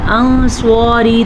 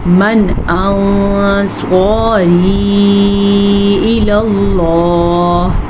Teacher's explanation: ہم نون ساکن کو چھپا کے پڑھیں گے، لیکن یہ مت بھولیے گا غنّے کے ساتھ پڑھیں گے. اگر کوئی پڑھے گا انصاری تو اس نے اخفاء کے قاعدہ تو ادا کیا، لیکن اخفاء کا رول جو تھا غنّے کا وہ ادا نہیں کیا.